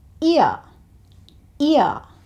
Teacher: in today's conversation, he also drops the letter H. So he says ear, ear.